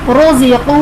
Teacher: रोज़िक़ू, रॉ पर पेश है, रॉ को पुर पढ़ेंगे।